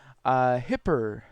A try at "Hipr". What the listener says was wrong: Nah, it's meant to be said hyper, but a lot of people do say hipper. it is hyper.